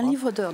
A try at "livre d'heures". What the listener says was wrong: Il faut dire un livre d'heures. Un livre d'heures, ce n'est pas un livre d'or. il faut qu'on entende bien, un livre